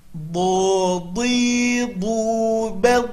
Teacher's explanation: Huruf do makhrajnya adalah tepi lidah ke gigi geraham atas.